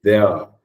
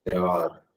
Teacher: The R sound shouldn't be audible. You shouldn't pronounce that.